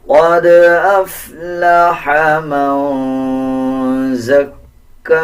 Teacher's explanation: آگے دیکھیں نون کے اوپر جزم ہے، اخفا کیا جائے گا یعنی غنہ کیا جائے گا اور آواز ناک سے نکالی جائے گی